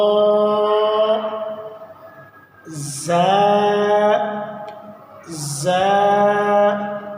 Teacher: इसके अंदर एक किस्म की झंझनाहट होगी